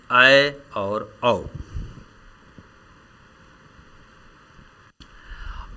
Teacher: अर्ध विवृत स्वर इसमें विवृत यानी ज्यादा खुलने की अपेक्षा कम खुलता है